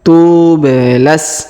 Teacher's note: huruf ba berharakat sukun maka kita pantulkan